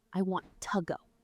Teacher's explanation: in a fast real sentence, that ooh sound disappears. It becomes our lazy schwa sound, tuh.